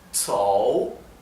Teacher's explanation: Mientras que este circunflejo al revés, que ven aquí, es el tono descendente y ascendente